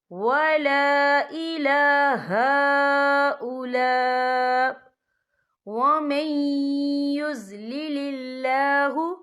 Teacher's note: تو یہاں پر ادغام ہوگا، تو ہم اسے تھوڑا سا غنّے کے ساتھ پڑھیں گے۔